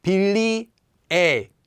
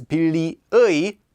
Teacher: Whenever this is just used by itself, or whenever it's used as part of word, it's just pronounced as 의 as usual. But when it's used as the particle 의, as this sort of meaning like an apostrophe 's' it is instead pronounced as 에.